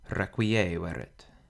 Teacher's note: With habitandus, the penult is long or heavy because the A is followed by 2 consonants, so that means that the accent falls on the penult, habitandus. In requiescerit, the penult is short, so the accent falls on the antepenult